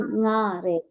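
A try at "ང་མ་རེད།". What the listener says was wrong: Nga mare. Higher.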